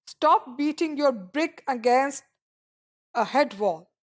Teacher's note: it was pronounced with the primary stress on brick. So the primary stress is on brick.